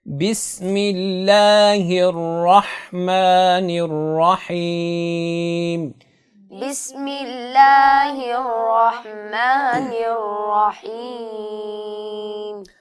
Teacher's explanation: بسم اللہ سین کی ادائیگی میں سیٹی کرنا ہے، اور سیٹی کا اہتمام کرنا ہے تاکہ اس کی آواز سا سے نہ ملے، اور اس کے بعد ہا کی ادائیگی میں آپ نے وسط حلق سے آواز کو نکالنا ہے تاکہ وہ ہا سے آواز بدل نہ جائے۔